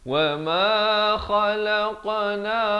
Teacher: kha di hujung kerongkong. Khalaqna, di sini nun baris fathah naik di atas sin yang bersabdu alif lam syamsiah.